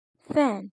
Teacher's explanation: In fricatives, the vocal tract is narrowly constricted. Air passes through a small gap creating friction noise. There is no complete stop.